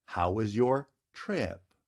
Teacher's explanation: trip is a kind of short word it ends with a voiceless stop and it's a short vowel